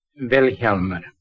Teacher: The accent's on the first syllable.